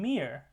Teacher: And we have the m in mere, which is the bilabial nasal.